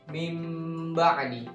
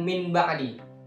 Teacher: walaupun disitu nol sukun udah jelas meskipun ketemu dengan baik itu enggak dibaca nun sukun tapi dibaca mim sukun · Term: iqlab, iklab